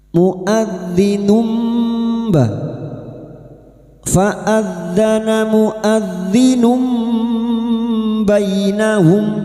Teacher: Membalik atau menukar. Membalik seperti bertemu mim namun siap membunyikan huruf ba mendengung selama tiga harakat. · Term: iqlab, iklab